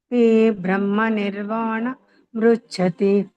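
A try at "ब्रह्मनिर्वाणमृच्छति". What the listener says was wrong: ಮೃಚ್ಛತಿ ಅನ್ಬೇಡ, ಅಲ್ಲಿ ಗ್ಯಾಪ್ ಕೊಡಬಾರ್ದು. ಬ್ರಹ್ಮ ನಿರ್ವಾಣ ಮೃಚ್ಛತಿ ಅನ್ಬೇಕು. ಸೇರ್ಸ್ ಹೇಳಿ.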